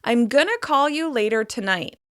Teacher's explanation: Gonna is a contraction of the words going to. Because go is stressed, we are reducing ing and to. In fast speech, it becomes gonna.